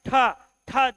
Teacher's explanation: टा के बाद ठ, ठ जैसे बोलोगे पूरे मुख से वायु भरी हुई नजर आएगी